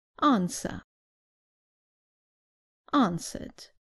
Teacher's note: in British English the r at the end is not pronounced